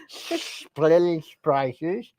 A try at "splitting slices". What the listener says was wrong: You don't hold your tongue right when you do that. It's splitting slices.